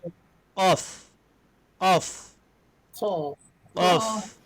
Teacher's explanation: Bila pangkal lidah, dia qaf ini berat Jadi cara menyebutnya ialah dengan mengangkat pangkal lidah ke atas. Pangkal lidah angkat sedikit ke atas.